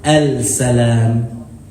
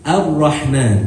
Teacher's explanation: that lam gets turned into a ra, and that ra gets pronounced with a shadda. But when you transition from a word before it, you skip over the alif and you go straight to the ra with a shadda.